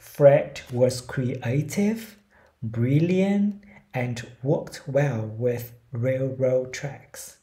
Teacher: mình sẽ lên giọng ở những cái liệt kê chừa cái cuối cùng ra. Ví dụ như là A, B and C thì mình sẽ lên giọng là A, B and C.